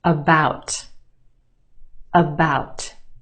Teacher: we have two syllables in that word the second syllable is emphasized or stressed the ow sound is stretched